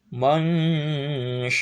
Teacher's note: Nah, ini harus diikhfakan ikhfa usat setiap nun sukun atau tanwin menghadapi sya maka nun sukun dan tanwinnya samar suaranya antara en dan eng. Caranya ketika menyebutkan mang maka tempelkan tengah-tengah lidah ke langit-langit atas